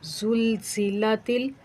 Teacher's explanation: ज़ा को थोड़ा सख्ती से सीटी की आवाज़ निकालते हुए पढ़ेंगे